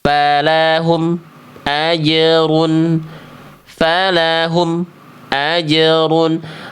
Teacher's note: Karena bunyi mim sukunnya dibaca tertahan, emnya putus. Antara bunyi em dengan bunyi a ada jeda hening, ada berhenti dulu, tak boleh.